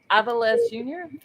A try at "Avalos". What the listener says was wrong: Avies. The L is silent. He's Mexican.